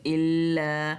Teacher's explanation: इल्ला के लाम को 3 अलिफ जितना लंबा खींचकर पढ़ना है